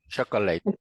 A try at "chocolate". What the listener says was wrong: okay, but chocolate has 3 syllables. The correct one is chocolate. Chocolate, 2 syllables. No chocolate. Chocolate.